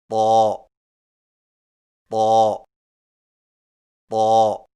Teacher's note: آئیے مشق کیجئے، ضاد ضاد طا کی ادائیگی میں زبان کی نوک کو سامنے والے اوپر کے دو دانتوں کی جڑ سے لگا کر اور زبان کے پچھلے حصے کو تالو کی طرف بلند کرتے ہوئے موٹی آواز میں پڑھیں، یعنی طا طا طا۔